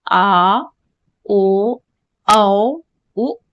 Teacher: उसके बाद पश्च स्वर जो है ये आ, ओ, औ, उ, ये पीछे जा रहा है, बोल करके देखिए आ, ओ, औ, उ, पीछे जा रहा है ना, तो ये पश्च भाग में आ जाएगा।